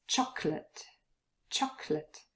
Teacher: move from the without a schwa and the last one chocolate there's a very short little schwa but usually we leave it out